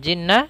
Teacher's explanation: Nun bertasdid kita tahan suaranya pada lafal nunnya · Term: Nun tasdid